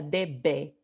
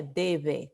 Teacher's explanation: Because remember, por la clase que hemos visto en la fonética y la fonología, esto no se pronuncia debe, se pronuncia debe con una fricativa. Entonces, esta pronunciación es para indicar la fricativa.